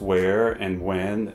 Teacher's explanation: hardly anyone pronounces the H sound in words such as where, when, or which. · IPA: /wɛɚ/ y /wɛn/, /wɛɚ/